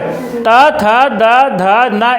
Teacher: इनका उच्चारण स्थान दंत है